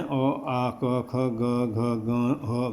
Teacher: ये कंठ से निकलते हैं। इनके उत्पत्ति स्थान कंठ है, गले से निकलते हैं। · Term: कंठ्य